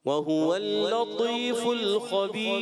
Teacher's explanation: خبیر میں را باریک کریں گے